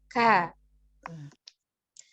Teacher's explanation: huruf k keluar dari pangkal lidah yang bertemu dengan langit-langit atas agak ke depan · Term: huruf Kaf